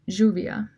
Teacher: It picks up fricative qualities and becomes a palatal fricative